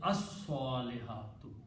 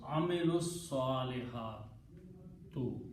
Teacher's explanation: But when you read with the al, it will be pronounced as as-salihatu. Lam is killed by the sound of swad, which is a shamsi letter.